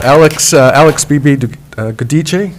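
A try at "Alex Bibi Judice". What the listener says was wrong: You're two-thirds there. Judice is the last part. Yeah, Judice. It's Judice.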